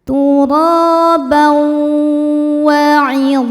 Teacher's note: Karena ada tanwin fathah menghadapi huruf wau. Cara bacanya tanwinnya dileburkan ke wau disertai bunyi dengung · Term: idghamunah, idgham bi gunnah